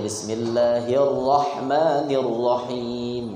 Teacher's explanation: Dan baca ra itu bainat tafkhim wa tarqiq, antara tebal dan tipis.